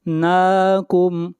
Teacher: نون کو کھینچ کر پڑھیں گے 1 الف کے برابر